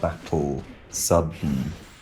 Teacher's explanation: We just reduce the vowel to nothing and have a syllabic consonant